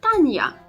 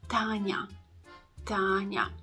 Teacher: So you see, it's not Tanya because the y sound should not be that prominent in the ya letter that is following the soft consonant. So it should be pronounced a bit softer. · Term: nya sound